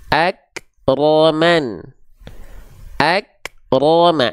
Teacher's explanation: Jadi ro-nya tebal, mimnya tipis. Ma, ro, ma.